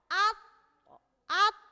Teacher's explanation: jadi tertahan dulu mengucapkannya, kemudian ada kolkolah. Nah, kolkolahnya yang disebut dengan kolkolah itu yang pantulannya gitu ya.